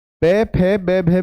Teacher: पे, फे, बे, भे में क्या हो रहा है कि दोनों होठ मेरे आपस में मिल रहे हैं। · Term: ओष्ठ्य